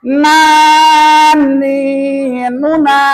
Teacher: nun itu dari ujung lidah dengan langit-langit yang atas.